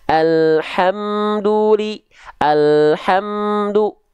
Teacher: mem dari bibir nempel jelas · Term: izhar syafawi